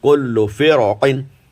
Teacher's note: قاف نے موٹا کر دیا را کو